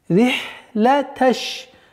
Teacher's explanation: С огласовки фатха мы уходим на звук щин с удвоением, так как солнечный звук, аннулируется артикль.